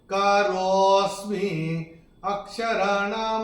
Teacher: जब हम रो को बोलेंगे, रो को थोड़ा सा खींच के बोलेंगे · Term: विलुप्त अ